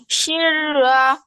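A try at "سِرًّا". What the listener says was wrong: সিন না, ফোটা সিন। সিরর, সিরর।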